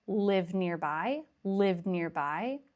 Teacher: But in rapid speech, the D is almost dropped.